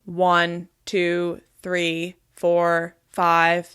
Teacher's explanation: Do you hear how the quality of my voice is a little different when it's in my chest?